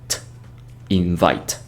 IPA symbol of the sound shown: t